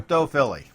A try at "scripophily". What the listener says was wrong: Scripophily. Not scripto. Scripo.